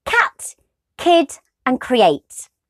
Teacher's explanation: the middle of the tongue goes up towards the top of the mouth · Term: last stop